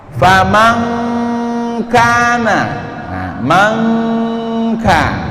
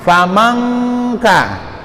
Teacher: itu nunnya lebih didekatkan ke huruf kafnya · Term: ikhfa